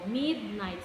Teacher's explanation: the syllable mid, it is being stressed, and the night, the syllable night is not being stressed